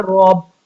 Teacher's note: جب را با کے ساتھ ملے گا تو پھر را کے اوپر زبر ہے تو پھر موٹا پڑے گا